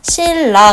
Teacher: 니은하고 리을이었던 게 완벽하게 리을로 일치가 되죠. 이런 게 바로 완전 동화입니다.